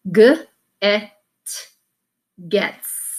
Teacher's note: Moving over to our G, G, so made in the back of your throat, and it's a voice sound